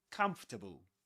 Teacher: You don't pronounce the letter R before consonants.